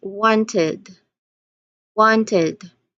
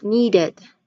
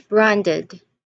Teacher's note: we actually add an extra syllable, and the suffix ed is pronounced as id